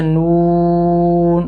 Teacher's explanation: جیسے یہ دیکھیں نون کا نام میں، یہ نون کے نام میں واو آئی ہوئی ہے، تو جب نون کا نام لیا جاتا ہے تو ہونٹ گول ہوتے ہیں، نون، تو اس وجہ سے اس کا نام لینے میں ہونٹ گول ہوں گے۔